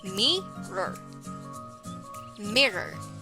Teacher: Mirror has 2 syllables. The first one is mi and the second one is roar. So you're going to put the stress on the first syllable. So it will be pronounced as mirror.